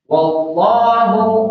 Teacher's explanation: Wallahu alif lam jalalah, wallahnya tebal dibacanya, jangan fil.